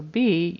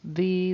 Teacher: he's pronouncing it as a b instead of a v so B your lips would close V they don't your teeth come